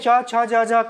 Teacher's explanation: च वर्ग जो होता है तालू से बोले जाते हैं